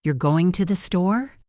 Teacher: If I say, you're going to the store, with my voice going up at the end, it is a question. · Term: intonation